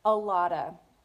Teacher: a lot of is often linked and reduced in American English to sound like a lotta · So the T sound in a lot sounds more like a D, a flap T